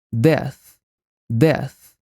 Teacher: a pronúncia desse TH é feita colocando a língua entre os dentes, só que em vez de fazer o som de Z, nós sopramos